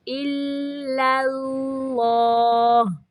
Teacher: پہلا لام باریک، دوسرا لام موٹا پڑھنا ہے